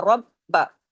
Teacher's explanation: با پہ تشدید ہے، سختی سے را اور با آپس میں جڑیں گے، ڈبل با ہے، ڈبل پڑھا جائے گا، رب با۔